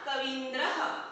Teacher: ह्रस्व ई जमा ह्रस्व ई बन गया दीर्घ ई